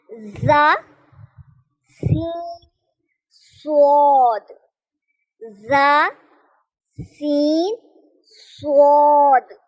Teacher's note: ये तीनों हरूफ जबान की नोक और ऊपर नीचे के दांत, जबान की नोक और ऊपर नीचे के दांत जब आपस में मिले तो अदा होता है। ख्याल रखिएगा, जा जो है स्वाद और सीन सख्ती वाले हरूफ होते हैं, इनको हम सख्ती के साथ अदा करते हैं।